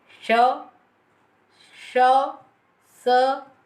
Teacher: सीटी की सी ध्वनि भी सुनाई देती है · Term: ऊष्म व्यंजन